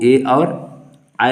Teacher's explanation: कंठ तालव्य में जो है कंठ और तालु दोनों का मिक्स है। इन दोनों जो है अंगों से मिलाकर जो वर्ण उत्पत्ति होती है वो ए और आय है।